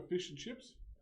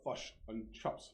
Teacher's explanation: New Zealanders can't pronounce their vowels. They can't pronounce their I's. So when we order fish and chips, they order fush and chops.